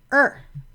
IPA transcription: ɚ